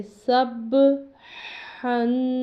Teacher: یہ جو ہا ہے اس کے تلفظ کا خیال کرنا ہے کہ یہ حلق سے ادا ہوتا ہے تو اس لیے اس کا بھی تلفظ کا بہت خیال کرنا ہے۔ تو اس لفظ کو ہم یہاں پر با پہ قلقلہ کریں گے، اس لیے اس کو پڑھیں گے سب ہن۔